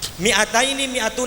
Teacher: hati-hati minya dibaca pendek ayah bunda. Ya, jangan sampai dibaca panjang nih.